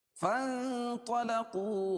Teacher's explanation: نون ساکن کے بعد حروف اخفاء کے 15 حرفوں میں سے طا آ رہی ہے، اس کو ناک میں آواز کو چھپا کر پڑھیں گے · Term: اخفاء حقیقی